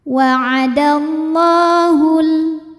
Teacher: ada lam berbaris fathah yang berdiri fathah panjang cara bacanya panjang dua harakat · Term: mad thi'i muqadar